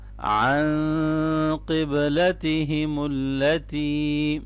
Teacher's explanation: عن یہاں نون ساکن پہ اخفا ہوگا